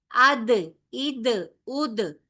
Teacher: دال میں آواز بھی بند ہو جاتی ہے اور سانس بھی بند ہو جاتی ہے، نہ سانس چلتی ہے اور نہ ہی آواز چلتی ہے. لہذا اس میں بھی حروف کلکلا کی صفت پائی جاتی ہے، اد، اد، اد، ٹھیک ہے.